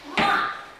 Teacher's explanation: Okay, this is the second tone, and then the fourth tone. It's again starting very high, okay? And it goes sharply down.